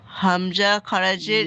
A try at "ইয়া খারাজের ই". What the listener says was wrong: ভাই হামজা নয়,